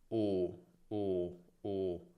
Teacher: Rispetto a U, la lingua è un po' più bassa e le labbra leggermente meno arrotondate. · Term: O chiusa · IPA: /o/